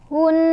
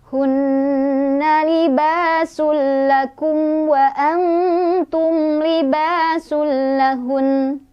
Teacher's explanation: Kemudian kita akan keluarkan sifat dari nun tersebut, yaitu harus ada dengungannya, harus ada bunyi sengaunya bunyi sengau yang bukan berasal dari menahan huruf, tapi dia lembut lembut keluarnya, sengau, terasa sampai hidung